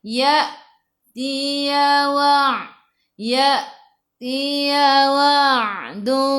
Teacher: Hamzah baris sukun kena baca dengan putus tahan nafas.